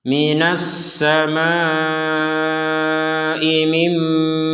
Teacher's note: ada nun sukun bertemu mim maka kita masukkan Nun ini kepada mim sehingga menjadi mim Ma Mim seperti itu Jadi tidak dibaca Min lagi ini bisa